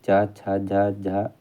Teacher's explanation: च छ झ झा उदाहरण है तो यह उदाहरण होता है स्पर्श संघर्षी व्यंजन का उदाहरण